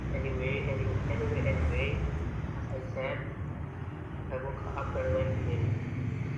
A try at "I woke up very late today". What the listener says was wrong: Very late, bukan very late. I woke up very late today. Woke sama up jangan dipisah. Kalau bisa digabung. I woke up. I woke up. I woke up very late today. It sounds more natural.